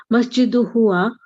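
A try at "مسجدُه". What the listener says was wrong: No, not masjidu huwa. Masjidu hu.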